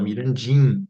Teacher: E vamos nasalizar esse I, porque a gente não fala Mirandinha, a gente fala Mirandinha, né? Esse I já está nasalizado por conta da consoante nasal que vem depois.